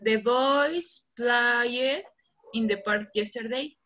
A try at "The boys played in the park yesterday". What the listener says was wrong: Pero la pronunciación correcta sería The boys played con T al final.